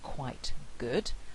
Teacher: the velar consonant there is having an effect on the consonant that precedes it and so it's produced with velar contact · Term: velar assimilation